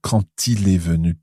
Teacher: when we have quand followed by a vowel, the D on the end is pronounced, but it's pronounced as a T